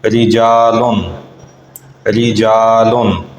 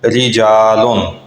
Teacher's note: اس حوالے سے ہم نے یہ سیکھا تھا کہ را کے نیچے زیر آ جائے تو را باریک ہوگی